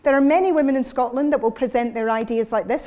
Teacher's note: I've got a nice raised larynx, I've got a tilted energy, it's kind of upbeat